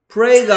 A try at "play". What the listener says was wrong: 아니고 Play. L 하고 R 하고 야 R 소리 넣는다고 영어 누가 잘한다고 할 것 같아? 개 소리 같다 이놈아. Play.